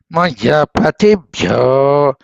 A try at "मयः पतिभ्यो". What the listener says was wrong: విసర్గ వినపడాలి. మయః పతిభ్యో